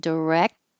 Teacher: the tongue goes to the K position holds the air flow and then the whole tongue pushes on the top of the mouth to block the air flow